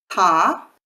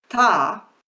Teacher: So ta with the sound, with the puff of air, and ta without the puff of air, but also without the vocal cords. So this phenomenon of using the vocal cords is called voicing.